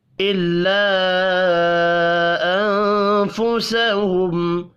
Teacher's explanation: الا الف کے اوپر چھوٹی مد ہے، تین الف کے برابر کھینچ کر پڑھیں گے۔ انفسہم، نون ساکن کے بعد فا ہے، اخفاء حقیقی ہوگا۔